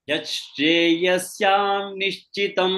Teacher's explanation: Yashreyasyaat nichitam. But when it is syat nishchitam, when it is continuously chanted, it becomes syan nishchitam.